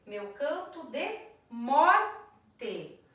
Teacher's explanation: meu canto de morte, a sílaba tônica é mor. Então eu paro de contar na sílaba tônica da última palavra.